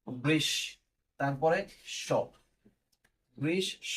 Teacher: যেমন এখানে মূর্ধন্য ষর সাথে আছে তাই মূর্ধন্য ষ বা শকে আমরা দুইবার উচ্চারণ করি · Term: দ্বিত্ব উচ্চারণ